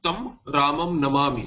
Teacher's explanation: Tam ramam, because repha does not have an equivalent of anuswara. This makara will become anuswara, but repha does not have a nasalized equivalent. So it will, the pronunciation of anuswara will be tam only.